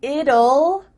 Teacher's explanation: when we say the contraction it will we kind of add a little u sound before the L it kind of sounds like ull so here we have two